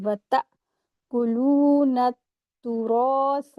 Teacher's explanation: را کو ہیوی کریں گے، سا کو سافٹلی پڑھیں گے۔